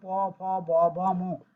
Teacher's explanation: প, ফ, ব, ভ, দেখো দুটো ঠোঁটে স্পর্শিত হয়েছে, এই দুটো ঠোঁটে স্পর্শিত হয় বিধায় এর নাম হইছে, এর নাম হইছে অষ্টবর্গ বর্ণ, অষ্ট অষ্টবর্গীয় বর্ণ।